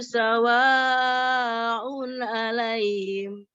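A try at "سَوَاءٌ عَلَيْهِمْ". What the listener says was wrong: Sawa'un alaihim. Sawa'un. Unnya hamzanya mesti dijelaskan bunyinya.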